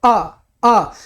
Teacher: एकदम बीच में दब जाती है। अ मध्य स्वर